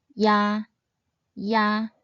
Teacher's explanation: start by sounding the “i” final and then transit into the “a” final sound. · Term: compound final